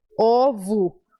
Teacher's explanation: Fica ovo, porque O, posição final no português, a gente transforma em U. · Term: som do U